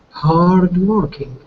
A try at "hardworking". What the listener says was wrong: Be careful with the R sound, because I was hearing hard with a trill. So be careful. Hardworking.